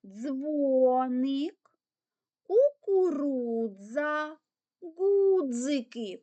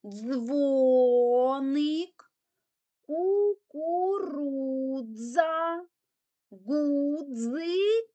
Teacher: намагаємося читати як один звук ДЗ нібито мушка комарик дзищить